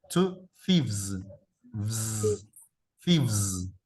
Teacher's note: al agregarle la B y la ES, ese es un sonido que las cuerdas vocales vibran